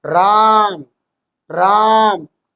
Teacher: जैसे मैंने बोला राम राम तो रा पे ज्यादा बल लग रहा है ना कि म पे।